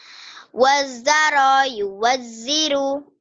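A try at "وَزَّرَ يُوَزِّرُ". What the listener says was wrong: Kurang nyamber. Wazzara yuwazziru. Kurang rapuh. Zai. Wazzara.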